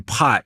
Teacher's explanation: the P in pot is like more aspirated. There's more air coming out.